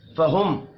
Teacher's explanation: ثریہم، را کو باریک پڑھیں گے، میم ساکن کے بعد فا آ رہا ہے، یہاں پر اظہار شفوی ہوگا، غنہ نہیں کرنا